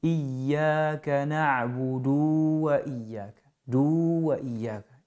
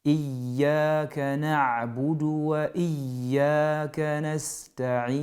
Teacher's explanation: Le du, il est prononçable sur un seul temps. Il n'y a pas de prolongation et du coup, il ne faut pas laisser le du traîner.